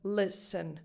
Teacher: So in English, it doesn't matter that listen is spelled with an E before the final letter, before the N. It's just a schwa. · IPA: ə